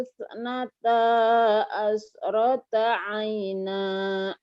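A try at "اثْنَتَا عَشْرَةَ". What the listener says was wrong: Shinnya mana? Asyrata aina. Shin.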